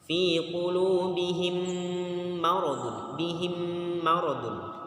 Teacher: Ini bacaan idgham mimi. Mim bertemu dengan mim, hukumnya dengung. Dengungnya itu kira-kira 2 harokat ya, 2 harokat sama dengan maktobi.